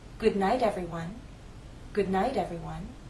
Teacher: If it's followed by an unstressed vowel sound, that final T in night changes to a flap T.